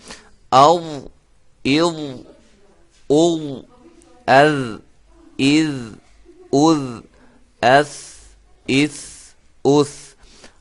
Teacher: زبان کی نوک اوپر سامنے والے دو دانتوں کے کنارے سے ادا ہوتے ہیں